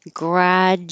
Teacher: Really, the DU makes a J.